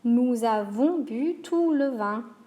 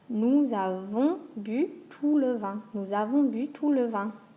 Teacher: Ou, open. Tout, open. Avons, very nasal. Vin, very nasal. And a sharp U sound.